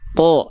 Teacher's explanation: huruf yang tebal ketika dia berharakat baris atas atau fathah maka dia dibaca dengan vokal terdengar seperti o · Huruf tebal dia tidak akan condong pada vokal A tapi dia akan terdengar seperti vokal Seperti vokal O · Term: huruf tho